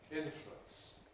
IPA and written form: ˈɪn.flwəns (influence)